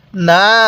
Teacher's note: এই নুনের মধ্যে আমরা তিন আলিফ টান দিব